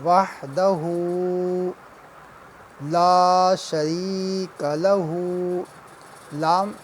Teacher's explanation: لام کے بعد الف ہے، لہٰذا اس لام کو ہم 1 الف کی مقدار جو ہے وہ کھینچیں گے، لمبا کریں گا۔ لا شریک، یا ساکن ہے، یا سے پہلے جو ہے وہ زیر ہے، سے یا مدہ کہتے ہیں، لہٰذا اسے بھی 1 الف کی مقدار لمبا کریں گے۔